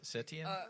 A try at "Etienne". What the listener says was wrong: Etienne? He doesn't even have an S in his name.